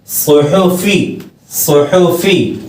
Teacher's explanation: صاد مخرج کے اعتبار سے موٹا سٹی والا، ہا حروف حلقی حلق کے بیچ والا، ٹھیک ہے نا، اور فا جو ہے حروف شفوی ہونٹوں سے ادا ہونے والا